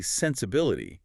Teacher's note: If you say sensibility, you're putting a secondary stress on the first syllable. You're slowing the listener down.